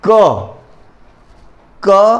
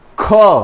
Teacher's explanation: और महाप्राण यानी जब हवा जो है फेफड़े से होकर ह का उच्चारण करती है अंत में, वह महाप्राण कहलाती है। अब देखिए, क और अ इसका उच्चारण हो रहा है, लेकिन ख तो इसमें क और ह आखिरी में ह का उच्चारण हो रहा है, इसलिए यह कहलाता है महाप्राण।